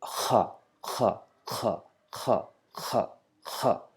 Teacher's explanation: Yeah, it should be vibrated a little bit. The throat vibrates a little bit, but it's not like coughing. · the sound KH should come from the lowest end of the throat with air and whisper with a slight vibration